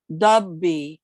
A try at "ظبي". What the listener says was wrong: no it's look like ضاد ظ ظ. It's better, but remember to put the tongue outside between the teeth. ظبي.